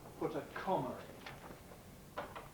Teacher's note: people do normally pronounce this with an R, put a comma in. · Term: intrusive R